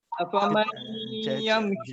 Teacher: Nun mati bertemu dengan ya, hukumnya idgham ma'al ghunnah.